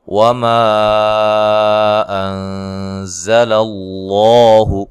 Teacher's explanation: نون ساکن کا اخفا مع الغنہ ہے، باریک اخفا ہے. زا کو زور سے ادا کرنا ہے، سیٹی کے ساتھ ادا کرنا ہے. للہ یہ لفظ اللہ کے لام کو موٹا ادا کرنا ہے اور یہ والی لام کو باریک پڑھنا ہے، ٹھیک ہے.